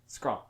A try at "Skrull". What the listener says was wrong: You're saying it too fast.